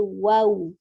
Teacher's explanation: Kemudian waw sukun di akhirnya tetap dengan memonyongkan bibirnya.